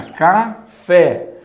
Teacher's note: A última sílaba é a sílaba acentuada. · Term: oxítona